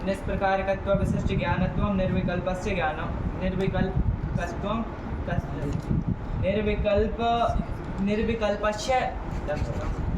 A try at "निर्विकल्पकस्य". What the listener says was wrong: निर्विकल्पकम लिखा, निर्विकल्पम लिखा है, तो लक्ष्य है निर्विकल्पक, तो तस्य निर्विकल्पकस्य होगा ना, कहाँ अक्षरों को काट रहे हो तुम, खाए नहीं हो, नाश्ता नहीं किए हो, अक्षरों को खा जा रहे हो।